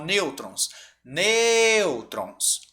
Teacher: sílaba tônica é a penúltima portanto é uma paroxítona